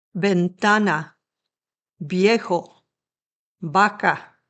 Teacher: A letter V in Spanish has sort of a soft letter B sound like your lips are only softly touching together. It's a B sound.